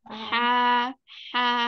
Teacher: sini Jadi kalau menyebutkan kalau menyebutkan H yang di ya ini bagian yang tengah ya itu hawanya lebih banyak ha udara hangatnya lebih banyak